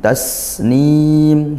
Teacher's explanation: sin sukun didesiskan ngalir suaranya. Kemudian mad arid lukun dibaca panjang boleh satu, dua atau 3 alif.